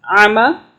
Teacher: اس عین کی جو آواز ہے اس کو الف کی آواز میں نہیں پڑھنا۔ اس کی جس کو نہیں آتا وہ پلیز پریکٹس کر لیں، حلق سے عین کی آواز کو نکالنے کی۔